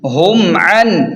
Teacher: میم ساکن پر غنہ نہیں ہوگا، اسے اظہار شفوی کہتے ہیں